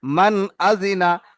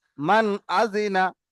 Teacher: তাহলে এই মানটাকে আর নুন সাকিনকে গুণনা করা যাবে না, তাড়াতাড়ি জাহির করে পড়তে হবে। মান আজিনা, মান, এরকম দাঁড়াবো না আর, তাড়াতাড়ি পড়ে যাব। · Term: ইজহার